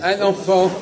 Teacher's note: on garde pas la diphtongue. Non, on la perd, on fait une liaison.